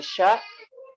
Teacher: Huruf sya, tempat keluarnya hurufnya dari tengah lidah.